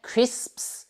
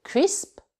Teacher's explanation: c'est pas facile à dire parce que le P est entouré de S, hein, un devant, un derrière